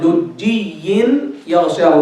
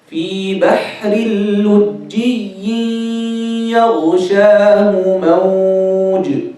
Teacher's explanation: Then you have lujjiyin yaghshahu, that's idgham with ghunna. And you have the jim has shadda there, so you have to show them clearly.